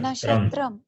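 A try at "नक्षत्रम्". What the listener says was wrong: Not nashatram. Kakara plus murdini shakara is there. Nakshatram.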